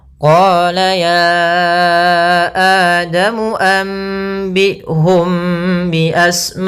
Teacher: Sehingga di sini kita 4 atau 5 harokat. Maka kita membacanya ma-nya 4 harokat dulu atau 5 harokat, baru dilepaskan kepada huruf hamzahnya.